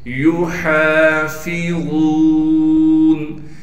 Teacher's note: युहाफिज़ून, या को बगैर खींचे पढ़ेंगे, हा के बाद अलिफ मद्दा होने की वजह से हा को एक अलिफ के मिकदार खींचेंगे और हा को साफ करके गले से निकालेंगे। फा को बारीक करके पढ़ेंगे, वा को मोटा करके पढ़ना है और वा के बाद वाव मद्दा होने की वजह से वा को एक अलिफ के मिकदार खींचेंगे।